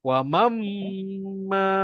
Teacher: Kalau mim dekat situ, dia akan jadi wa mamma. Dia akan jadi dengung.